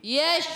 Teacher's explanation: شین حرف تفشی ہے، منہ میں آواز پھیلتی ہے، وسط زبان وسط تالو سے زبان کے درمیان اور اوپر کے تالو کے درمیان سے ادا ہوتا ہے.